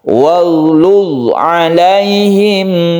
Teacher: Luz ini juga tidak memantul, artinya jangan dipantulkan karena bukan qalqalah